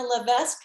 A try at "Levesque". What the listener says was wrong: i don't say the s that's why the ass is silent